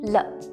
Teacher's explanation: Le is also a neutral tone, which means it's short and brief with no tone marks on top.